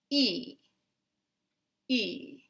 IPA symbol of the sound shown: i